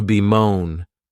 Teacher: this verb has two syllables and the stress is on that second syllable